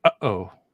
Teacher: it's by closing your larynx before you start the word right huh so it would instead of uh oh it would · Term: glottal stop